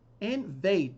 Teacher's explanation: The stress is on the second syllable, and this is a verb.